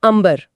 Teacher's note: इसका पंचमा अक्षर है म। जिसके उच्चारण में दोनों होठ आपस में मिलते हैं। · ब बोलने के लिए होठों को मिलाना ही पड़ेगा। इसी शारीरिक आवश्यकता के कारण वो बिंदी स्वतः ही म की ध्वनि में बदल जाती है। शुद्ध रूप अंबर बन जाता है।